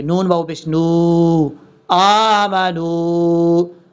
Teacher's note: کر کے پڑھا جائے گا، اور نون کے بعد واؤ ہے، نون کو واؤ سے ملائیں گے، یہاں پر بھی ایک الف کی مقدار لمبا کریں گے